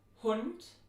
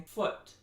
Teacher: this vowel, Hund, is farther back than the vowel in foot. The other thing that you have to do is just focus on vowel length because it is phonemic in German and this is a short vowel.